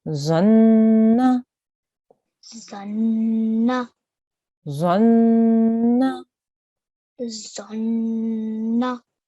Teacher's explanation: So when we make the noon with the vowel, which is the fatha, we will say that for 1 second, but we will hold on the noon and make the sustained nasal sound for 2 seconds